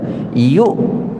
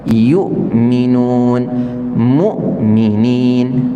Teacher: makhraj dia tertutup kita namakan dia syiddah Contohnya apa Hamzah yukminun ketika kita sebut Hamzah yang mati tak ada dah suara kita keluar terputus